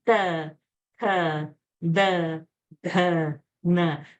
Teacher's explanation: Ta, tha, da, kha, n. Then the dantya, dental, where the tongue has to touch the teeth, between the teeth.